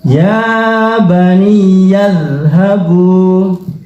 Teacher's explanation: zal itu bukan qalqalah ya, terus tidak perlu pakai ya, nggak perlu mantul